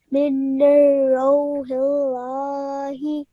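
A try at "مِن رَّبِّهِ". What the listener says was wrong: Okay, but remember that we do not produce the sound of this noon. Okay? We straight away join the meme to the ra.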